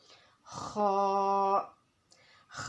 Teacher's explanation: خا، خا کی مقدار 2 الف کے برابر ہے اور خا کا مخرج ہے ابتدائی حلق، یعنی کہ حلق کا وہ حصہ جو ہمارے منہ کی طرف ہے، वहाँ से खा अदा होगा।